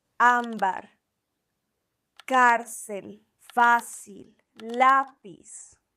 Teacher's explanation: These words have the stress on the penultimate syllable, meaning the second to last syllable. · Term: graves